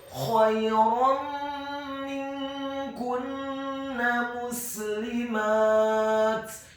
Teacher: Huruf nun yang sukun bertemu dengan huruf kaf yang dhammah. Hukum bacaannya adalah ikhfa, dibaca secara samar-samar. · Hukum bacaannya adalah ikhfa, dibaca secara samar-samar. Kemudian huruf kafnya dibaca tipis, tarqiq, dhammah 1 harokat, dan huruf nunnya ditasydidkan fathah, cukup 1 harokat saja